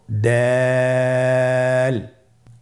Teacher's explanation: দাল হরফটি বারিক হরফ। এ হরফটি উচ্চারণ করার সময় আমরা অবশ্যই তিন আলিফ টেনে পড়বো